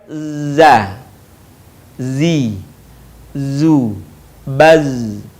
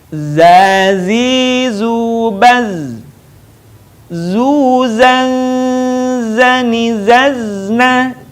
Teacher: Huruf za dikeluarkan dengan ujung lisan kita hampir di atas dua gigi seri bagian bawah. Diucapkan dengan mengalir suara tanpa diiringi dengan mengalirnya udara. Sifat lain pada huruf za ini, karakter khasnya dia mirip dengan suara dengungan tawon.